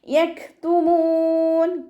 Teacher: കാഫ് സുക്കൂനാവുന്ന സമയത്ത് air pass ചെയ്യണ sound കൊടുക്കുക കേട്ടോ.